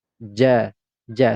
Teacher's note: ja perhatikan di sini huruf Jim yang kedua berharakat fathah tanwin karena dia berada di akhir ayat maka ini tidak lagi dibaca Jan tetapi dibaca ja